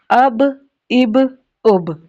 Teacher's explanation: Lips are the makhraj of ba.